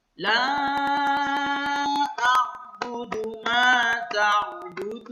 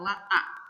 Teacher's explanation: Itu bukan hamzah tapi huruf ain